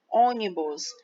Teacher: Primeira, segunda, terceira sílaba. A sílaba forte é o O. Então, ela é uma proparoxítona.